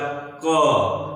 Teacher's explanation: यह हमारी आवाज जो है कंठ माने गले से निकल रही है